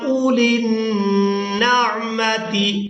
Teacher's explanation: حمزہ کو بغیر کھینچے ادا کرنا ہے